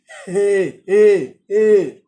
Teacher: Le son c'est H, non pas aspiré, mais expiré.